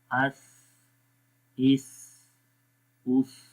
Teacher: حمزہ سا زبر اس، حمزہ سا زبر اس. تو اس کے اندر تھوڑی سی ہوا جو ہے وہ ہماری جاری رہتی ہے، سانس جاری رہتا ہے